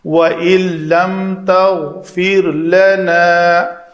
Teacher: لم نون ساکن کے بعد لام ہے تو ادغام کامل ہوگا نون کا، نون پڑھنے میں نہیں رہے گی، نون کا ادغام ہو جائے گا۔